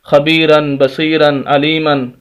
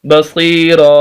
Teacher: ایک زبر اور الف پڑھا جائے گا تو وقف ہو جائے گا